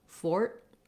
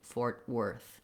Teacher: Fort. I lift my tongue for that T spot, but I don't release the T. I just release right into the W. Fort Worth. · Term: stopped T